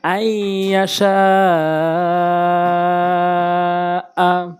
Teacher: এখানে শিন কিন্তু 4 লিফ টানতে হবে মধ্যে মুত্তাসিলের কারণে